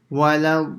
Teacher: So we have to stop on the lam for about 1 or 2 seconds. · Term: shadda on the lam